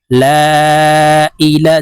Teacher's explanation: এই লামকে তিন আলিফ টেনে পড়বো